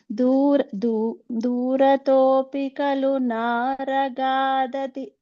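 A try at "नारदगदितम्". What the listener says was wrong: You're switching da and ga. Narada Gaditam.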